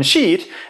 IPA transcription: ʃit